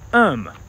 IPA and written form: ʌm (um)